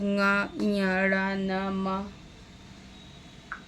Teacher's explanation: नासिक से अर्थात नाक से सभी वर्ग के अंतिम अक्षर का उच्चारण होता है